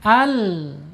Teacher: lamnya secara makhraj ada di ujung tepi lidahnya menyentuh langit-langit yang depan sejajarkan dengan gigi seri. Al gitu ya.